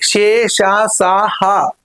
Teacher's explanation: ఊష్మాలు అని అంటే ఊది పలకబడేవి